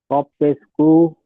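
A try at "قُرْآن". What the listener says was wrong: কপ পেশ, কপ পেশ কো নয়, রয়ের কপের কপের উপরে পেশ, আর তারপরে রয়ের উপরে সাকিন। হামজা খাড়া জাবার আ, হামজা খাড়া জাবার আ, কুর আ, নুন দু পেশ নুন, কুর নুন, কুর নুন।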